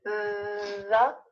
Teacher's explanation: Your tongue is at the front of your mouth, either between your teeth, the, or directly behind your teeth